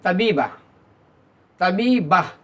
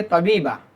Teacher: Arabic ज़ुबान जब हम बोलेंगे तो ये हमारी गोलता हा में बदल जाती है। यानी तबीबतुन ना कह के हम कहेंगे तबीबा।